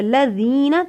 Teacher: ذال کو ادا کرنے کے لیے زبان کی نوک کو دانتوں کے کنارے پہ لگائیے. ذال پہ سیٹی کی آواز نہیں آتی.